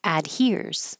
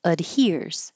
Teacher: You can keep the A sound ad, or you can change it to ud because it's not stressed.